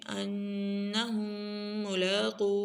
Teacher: انہم ملاقو انہم ان کے اوپر غنہ ہم کے اوپر غنہ قاف کو موٹا را کو موٹا